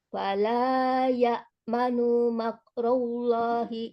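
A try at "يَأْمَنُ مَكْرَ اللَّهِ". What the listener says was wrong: Oh, jangan lagi nu-nya itu manu, ma, nu, ma sama-sama pendek. Ya manu makrullah.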